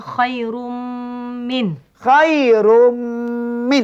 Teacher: Tugasnya ialah hendaklah diidghamkan Dan serta didengungkan. masuk idgham dan ada dengung. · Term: idgham ma'al ghunnah